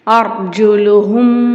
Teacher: சுக்குன் பெற்ற ராக்கு முன்னாடி ஜபர் வரதுனால அந்த ராவ நம்ம வல்லினமா ஓதணும்